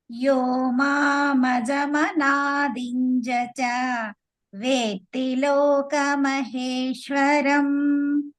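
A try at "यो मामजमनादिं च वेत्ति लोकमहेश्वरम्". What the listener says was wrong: It's not dinjacha, dincha. Dincha, that's no dinjacha.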